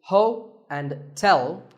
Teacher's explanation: there are two syllables ho and tell like the English word tell as in tell me the stress is on the second syllable